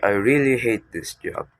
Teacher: by emphasizing the word hate, we convey a strong negative emotion